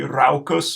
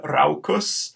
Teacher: Raucus with an AU diphthong making that ow sound